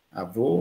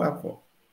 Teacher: Mas em avô, o O é fechado e transforma a palavra em masculino. E avó, o O é aberto e transforma a palavra em feminina. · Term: metafonia